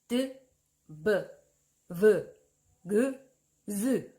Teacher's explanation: 이런 아이들을 한번 해보시면 목젖이 달달달달달 떨려요. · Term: 유성음